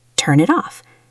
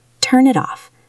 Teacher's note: The N connects to the I and the T connects to the O. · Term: connected sound